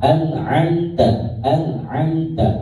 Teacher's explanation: Kemudian, ya, an dibacanya jelas, tidak dengung. Kemudian amta juga sama. · Kalau yang ain, ya, an, ya, jadi lebih ke tenggorokan.